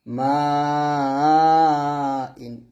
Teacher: এখানে চারে টান দিতে হবে মিম ফাথা আলিফ মাদ এরকম উচ্চারণ হয় তো আমরা ওরকম পড়বো না মিম আলিফ জবর মা হামজা দুই জের ইন মা ইন এই মাতে আমরা চার আলিফ টান দিব